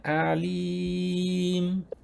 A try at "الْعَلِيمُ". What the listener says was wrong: ওতে আবার লামে কলকলা গুন্না হয়ে গেছে, বিলা গুন্না। বেশি নরম করে আলিম, এই যে আলিম। الحمد لله رب العالمين عالى عالى এরকম না, আলা এটা না, আলামিন